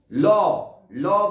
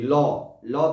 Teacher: ল বলার সঙ্গে সঙ্গে জীব গিয়ে সামনে ধাক্কা খাচ্ছে, আর দুই দিকে গ্যাপ তৈরি হচ্ছে, দুই পাশ দিয়ে বাতাস নির্গত হচ্ছে। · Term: পার্শ্বিক ধ্বনি